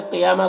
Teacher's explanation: क़ाफ को पुर पढ़ना है। या में खड़ा ज़बर है, एक अलिफ के बराबर खींचेंगे, और यहाँ पर वक्फ़ करेंगे तो गोलता है साकिना बन जाएगी।